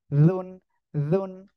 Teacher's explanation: জিহ্বার আগা দুই দাঁতের আগা সঙ্গে লাগিয়ে উচ্চারণ করতে হবে